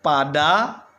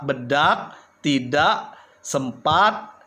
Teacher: Nah, ini kan perubahan yang tidak jelas misalnya kan pada fonem A ya, yang berada dalam suku kata terbuka. Nah, kemudian kedengarannya lebih nyaring bila dibandingkan dengan fonem A yang terdapat dalam suku kata tertutup kan. Ya, coba Anda bandingkan antara kata pada, kata rata dengan kata bedak, tidak, sempat, dan lain sebagainya ya.